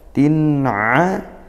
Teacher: tanwin bertemu ain, izhar halqi dibaca jelas tanwinnya